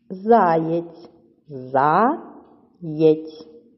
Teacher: Визначаємо наголос заєць чи заєць. Так, наголошений перший склад.